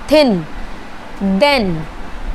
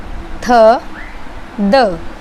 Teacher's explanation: थ और द की जो आवाज़ है वो अपर टीथ और लोअर टीथ के बीच में हमारी टंग होती है, तब वो आवाज़ निकलती है, थ, द। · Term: इंटरडेंटल